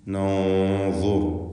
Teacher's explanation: ഇവിടെ നൻദുർ എന്ന് പറയുമ്പോൾ ഇഖ്ഫാ ഹഖീഖി എന്ന നിയമമനുസരിച്ച് സാക്കിനത്തായ നൂനിനെ മറച്ചു അവ്യക്തമാക്കി മണിച്ചുകൊണ്ട് ചരിക്കണം. ശേഷമുള്ള അക്ഷരം ഇസ്തിഅലാഹിൻ്റെ 7 അക്ഷരങ്ങളിൽ ഒന്നാണ്, വാ ആണ് എന്നതുകൊണ്ട് തന്നെ അതിനെ തടിപ്പിച്ച് തഫ്ഖീം ചെയ്ത് ചരിക്കണമല്ലോ.